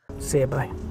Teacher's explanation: do you hear how the music or intonation Falls after the final Peak · do you hear the Peaks on the words see and bu that's the stress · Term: falling intonation pattern